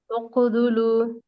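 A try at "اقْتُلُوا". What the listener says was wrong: தால் தால் sound வருது. தால் sound வரக்கூடாது. த இங்க இருக்கிறது த. உக்குதுலு. தால் இல்ல, தூ. தூ நார்மலா தமிழ்ல வரும்ல, தூ அது. உக்குதுலு.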